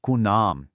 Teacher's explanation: It is such a common mistake for the tongue to just get a little lazy and accidentally swallow that lam, making it sound like kunam